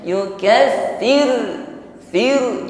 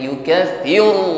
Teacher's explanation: Yukaffi, fi berikutnya ra sukun, sebelumnya ada bunyi i atau kasrah, maka diringankan getaran ra-nya. Yukaffir, fir, jangan yukaffir, nah, tidak ditebalkan, tarqi.